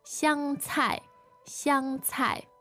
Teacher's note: All right, first tone, fourth tone